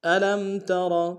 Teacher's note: ترى میں را کو موٹا ادا کریں گے